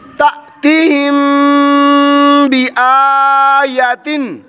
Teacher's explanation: میم ساکن کے بعد حرف با آنے کی وجہ سے اخفاء شفوی گننے والا